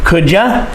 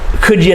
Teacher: we blend them together and we change you to ya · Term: reduced forms